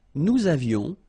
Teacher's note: Nous avions, little liaison, final S not pronounced.